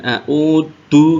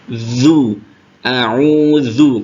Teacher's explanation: A'udzu, lalu ini zal jangan sampai tertukar dengan dal, bukan a'udu tapi a'udzu, berarti kan agak keluar sedikit ujung lidah bertemu dengan gigi atas. Zu, a'udzu, kalau dal itu ujung lidah bertemu dengan pangkal gigi atau pangkal gigi seri atas atau gusi.